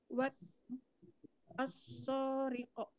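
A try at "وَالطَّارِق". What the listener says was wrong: Watto, itu huruf to. Wattariqo.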